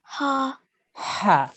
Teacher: comes from the throat middle of the throat